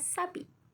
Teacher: bunyi frikatif geseran apikodental atau lamino alveolar tak bersuara